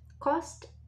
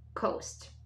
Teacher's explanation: so you see that cost is shorter sound than coast